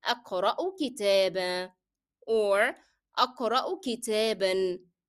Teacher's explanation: if you stop on it, you can drop the pronunciation of N, that of تنوين with فتحة.